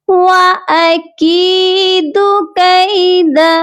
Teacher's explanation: کی کو ہم کھینچیں گے کیونکہ کاف کے ساتھ یا مدہ ہے